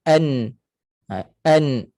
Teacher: dia ada rasa di hidung satu kali sikit je secara semula jadi asliah ataupun kita Panggil martabat Kalau ikut martabat ketebalan martabat gunnah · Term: gunah asliah